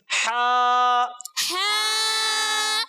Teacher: حلق کے درمیان والے حصے سے ہا ادا ہوتا ہے